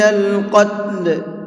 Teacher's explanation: قتل کے قاف کو بھی منہ بھر کے پڑھیں گے